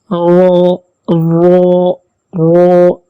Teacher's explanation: رو کا مخرج اگلے دونوں دانتوں کے مسوڑھوں سے اور اس کا کچھ تعلق زبان کی پشت سے بھی ہے، جو نوک سے ذرا آگے چل کر ہے۔